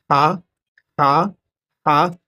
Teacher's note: ہا جو ہے حرف حلقی ہے، یہ بیچ حلق سے ادا ہوتا